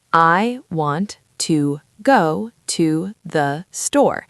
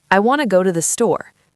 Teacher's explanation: The words to the become tha.